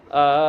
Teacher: मिलाना, यानी कि हमज़ा को खींचेंगे और लाम से मिलाएंगे